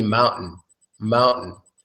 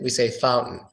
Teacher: generally when we're speaking comfortably mountain has no T sound in American English